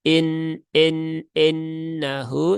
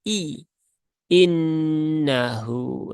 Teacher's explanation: itu innahu ada yang pertama huruf i ya harakatnya kasrh maka pastikan dia adalah bunyi kasrah bukan e